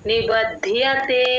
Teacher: బ కి మహాప్రాణం లేదు ఓన్లీ ద కి మాత్రమే మహాప్రాణం